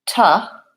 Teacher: I don't actually say to with an oo. I actually say ta with vowel schwa. Sounds like ta.